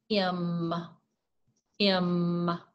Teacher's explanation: have to say a consonant sound your mouth stays completely closed air does not flow freely to or from your mouth okay it's released through your nose